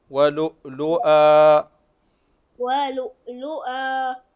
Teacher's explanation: فهنا هذا المد يسمى مد عوض عوض عن التنوين